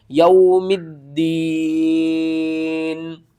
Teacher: واو ساکن سے پہلے زبر ہے، حروف لین ہے، جلدی کے ساتھ پڑھنا ہے